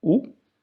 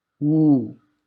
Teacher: You stress on that sound, oo, and make it a long vowel.